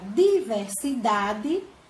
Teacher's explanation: a sílaba da é a mais forte ela não é a última ela é a penúltima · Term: sílaba tônica